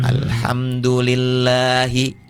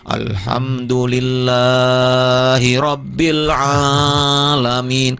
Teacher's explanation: Lafzul jalalah Allah itu mad. Namanya mad asli atau mad tabi'i. Panjangnya cuma 2.